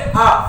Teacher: अर्थात आप बोले आ, जब आ बोलते हैं तो जीभ आ, मुंह इतना खुल जाता है, जीभ बीच की बीच बनी रहती है, तो इसे आप कहते हैं आ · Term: मध्य स्वर